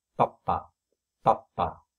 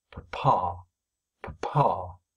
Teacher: If we do it in English, where the lips are blown apart by the stress pulse, and in this case, of course, the stress pulse appears on the second syllable, and the first syllable will just be a stutter, a schwa sound will appear, but basically you're stuttering on P to get the first syllable before you get onto the stress syllable, then the result is something like this.